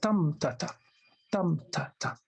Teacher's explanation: start with stressed, then followed by unstressed, that's dactyl